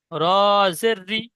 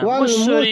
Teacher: রি টান হবে না, কি টান হবে।